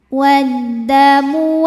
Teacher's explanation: Kemudian ada hukum alif lam yang dinamakan dengan alif lam syamsiyah, sebab ada alif lam yang menghadapi huruf syamsiyah yaitu huruf dal, maka alif lam tidak kita baca atau dilewatin ya, dinamakan dengan idgham syamsi